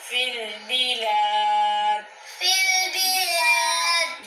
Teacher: بلاد کے لام کو کھینچ کے پڑھیں گے یہاں پہ کھڑی حرکات ہے